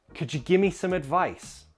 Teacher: also notice give me we sometimes contract to Gim me